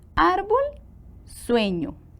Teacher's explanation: Tienen el acento en la penúltima sílaba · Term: graves